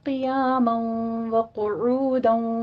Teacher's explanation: قیاما وقعودا میں قاف کو پر پڑھنا ہے